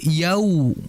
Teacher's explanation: Wau di situ vokalnya u yaumi. Jangan sampai terbaca oleh kita dengan vokal o. Yaumi yau yao yang betul yau ya bedakan antara yao dengan yau.